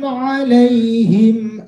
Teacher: langsung jelas tanpa berdengung di bibir. Inilah contoh izhar syafawi.